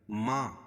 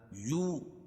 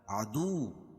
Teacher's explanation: ما الف مدہ، یو واو مدہ، عدو واو مدہ۔ حروف مدہ کو ایک الف کے برابر کھینچ کے پڑھیں گے۔